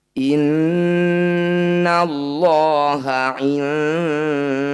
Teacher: Innallaha didahului fathah, lafaz Allahnya, maka harus dibaca tebal. · Cara bacanya bunyi nun sukun dengungkan 2 harokat. Saat berdengung, lidah kita bergeser posisinya dari posisi nun sukun menuju dal. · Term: ikhfa